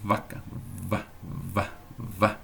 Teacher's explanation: Então veja, v é o lábio, encostando no dente, né, superior. · Quando você diz vá, é lábio inferior e dente